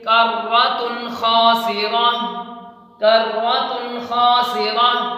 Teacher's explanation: نون تنوین کے بعد حروف حلقی آیا ہے خا، اس وجہ سے اس کو بغیر غنّے کے پڑھتے ہیں، یعنی نون تنوین کو صاف کر کے پڑھیں گے، یعنی واضح کر کے پڑھیں گے، ظاہر کر کے پڑھیں گے، یعنی کرۃ خاسرہ، کرۃ خاسرہ۔